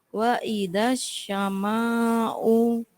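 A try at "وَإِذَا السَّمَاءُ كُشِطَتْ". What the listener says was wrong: Unya pendek.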